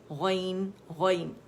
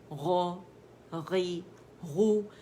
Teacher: ادن الحلق اس کا مخرج ہے غین کا